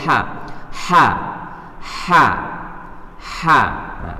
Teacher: keluar dari tenggorokan bagian tengah seperti suara pernafasan suara bersih dan nyaring jadi ha itu keluarkan dari tenggorokan bagian tengah itu bersih ha